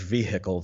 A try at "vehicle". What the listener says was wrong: Did you say vehicle? Who pronounces the H? That's a lot of breath.